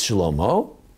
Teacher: It's Shlomo, the accent on the second syllable, as in most Hebrew words. And it's wrong because it's not Shla.